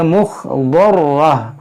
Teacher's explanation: دو زبر ہے، آگے وقف مطلق کی علامت ہے، یہاں پر وقف کریں گے تو اسے ہا ساکنہ سے بدلیں گے